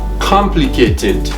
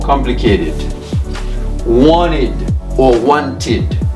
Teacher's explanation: the Ed ending now is pronounced as a separate syllable